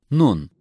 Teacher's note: Nun is articulated when the tip of the tongue reaches the roots of the upper central teeth.